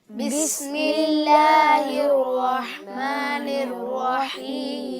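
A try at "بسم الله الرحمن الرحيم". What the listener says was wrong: जी बेटा, बिस्मिल्लाह में हा की अदायगी दुरुस्त करें।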